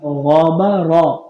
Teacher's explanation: غین موٹا ہے را موٹا ہے با باریک پڑھیں گے